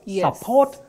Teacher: The stress is on the second syllable. Support, whether it functions as a verb or a noun.